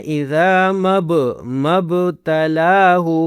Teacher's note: با پر قلقلہ کرنا ہے